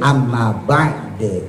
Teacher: Dulu saya contohin misalnya kayak amma ba'du. Kalau diwakafin amma ba'd harakatnya dihilangkan gitu.